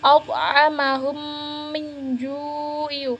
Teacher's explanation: cara membacanya tuh lebur disertai dengung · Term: Idgham mimmi